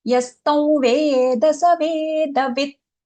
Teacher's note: This one thing that we have to keep in mind is that anuswara there, yastam, not yastam. Anuswara followed by the letter va. So we have to use the nasal va.